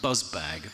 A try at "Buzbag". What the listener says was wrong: It's one of those invisible Gs.